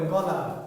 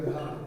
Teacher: যখন আপনি ঘাড় বলছেন ঘ, তখন দেখেন একটু বাড়তি প্রেশার দিতে হচ্ছে। গ অনেকটা সহজে বলা যাচ্ছে।